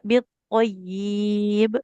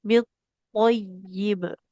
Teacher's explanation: Kemudian biibanya kasrah tidak ada huruf mad di depannya enggak boleh dipanjangkan. Tidak bityib tapi bitib.